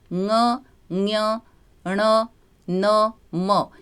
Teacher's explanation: ये जो पंचम वर्ण है ङ, ञ, ण, न, म, ये पांचों वर्ण हमारे नासिका से भी निकलते हैं, इसलिए इनका उच्चारण स्थान नासिका भी होता है।